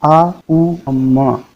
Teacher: आ जो है वो गले से निकलता है, उ जो है ओष्ठ से मतलब होठों से निकलता है, और माँ जो है वो नासिका से निकलता है।